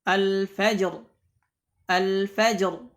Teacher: Jika ada ra yang sukun sebelumnya ada huruf yang sukun, sebelum huruf yang sukun tersebut ada huruf yang hidup yang berharakat fathah, ya, dan ini dalam keadaan waqaf, ya, halul waqfi 'alaiha, ini dalam keadaan waqaf, maka ra-nya juga dibaca tebal